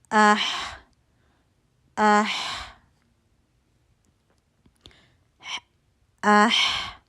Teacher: اس میں ہمس محسوس ہو رہا ہے. ٹھیک ہے، اور آواز بھی چلتی محسوس ہو رہی ہے